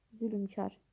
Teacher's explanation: Çünki tələffüzdə ü saiti əlavə olunur. Zülmkar yazılır.